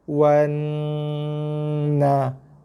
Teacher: Tapi kalau ada huruf yang bertindih macam ni, kaedah bacanya kita baca huruf atas baru huruf bawah. Huruf atas tu huruf nun. Ada sabdu pula, tekan, dengung dan lepas. Wan na. Jim mati jadi huruf qalqalah, lantun. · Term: nun sabdu dengung